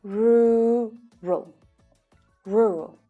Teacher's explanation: the second syllable is unstressed and it's lower in pitch